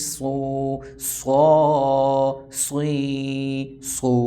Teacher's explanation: صاد کو سین اور زا کی طرح نہیں پڑھنا, بلکہ سین اور صاد تھوڑا سا آپس میں ملتے ہیں, لیکن صاد کو پر یعنی موٹا پڑھنا ہوتا ہے